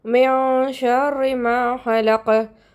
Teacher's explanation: ஷீன் is one of the இக்ஃபா letter. நம்ம குன்னா செஞ்சு நூனை பாதியாக மறைச்சி ஓதணும்